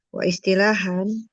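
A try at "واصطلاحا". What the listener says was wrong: Bukan wa istilahan. Hamzah wasal dia, Jangan dibaca.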